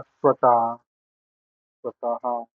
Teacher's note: विसर्ग याचा अर्थ काय की आपण अर्धा श्वास सोडून देतो आणि मग त्या विसर्गाचा उच्चार होतो.